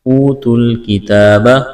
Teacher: واو ساکن ہے، اس سے پہلے پیش ہے، واو مدہ ہے، ایک الف کے برابر کھینچنا ہے۔ اس واو اور الف کو نہیں پڑھیں گے، تا کو لام کے ساتھ ملانا ہے۔